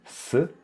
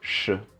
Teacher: Så istället för att tungan är rak, som i S, så rullar man tillbaka så det blir sh. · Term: retroflex